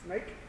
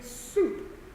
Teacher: Snake is a very wide sound. Soup, that's a very narrow sound, right? So the corners of your mouth are going to lead into that.